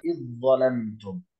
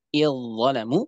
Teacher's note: Za-nya hilang dan masuk ke dalam dha secara kamil, secara sempurna. Maka dia zalnya hilang baik secara zat maupun secara sifat. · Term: idgham kamil